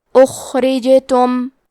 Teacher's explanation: کلمت اخرجتم میں جیم پہ جزم ہے، لہذا یہاں بھی جیم کا حکم ہے قلقلہ، تو ہم یہ حرف کو ہلاتے ہوئے یہ کلمہ کو پڑھیں گے